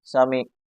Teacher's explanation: سے نکالیں، اس کو عین کو، عین حلق سے نکلتا ہے، عین کی جگہ اکثر نمازی حضرات حمزہ پڑھ دیتے ہیں